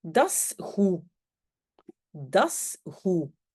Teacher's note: le goed, je ne prononce pas le D